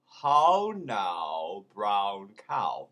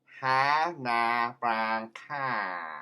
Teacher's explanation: in Cockney, that sound of ow becomes ah. Ha na brown cow.